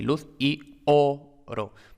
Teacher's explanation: Aquí cuidado porque luz y oro, esto no hace sinalefa porque la segunda vocal es tónica y ya hemos dicho que la sinalefa se evita cuando la segunda vocal es tónica, que es lo que tenemos aquí, luz y oro. Por tanto, son heterosilábicas y el acento se marca en oro